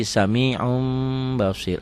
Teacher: Nah, bunyi n-nya kalau bertemu dengan ba berubah jadi m. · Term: Iklab